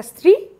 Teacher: সেখানে পাশাপাশি তিনটে ব্যঞ্জন ধ্বনি আছে দন্তস ত বয় শূন্য র তিনটে ব্যঞ্জন ধ্বনি পাশাপাশি থেকে একটা দলের মধ্যেই রয়েছে কোন দলের সীমানা নেই এবং সে রয়েছে শব্দের শুরুর দিকে অর্থাৎ প্রথম সীমায় রয়েছে সে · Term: যুক্তধ্বনি